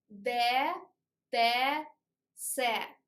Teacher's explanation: in Russian, tongue looks down to teeth